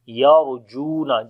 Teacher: Lam we long due to alif madda. Ra we read in heavy sound because ra is coming with sukun sign and there is fatha before the ra.